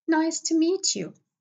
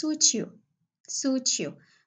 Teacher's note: A word ends in t and followed by a word that it starts with y. In this case, the t will be changed into ch.